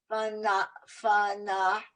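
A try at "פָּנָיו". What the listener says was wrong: There's a letter on the end. Fanav. It's a vav.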